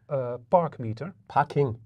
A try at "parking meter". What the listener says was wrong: It's not a park meter. It's a parking. you say park.